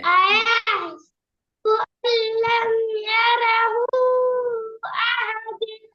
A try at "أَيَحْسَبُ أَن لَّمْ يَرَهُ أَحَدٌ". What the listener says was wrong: போதாதே போதாதே, 3 second நீட்டணுமே. 6 அளவுக்கு நீட்டுங்க.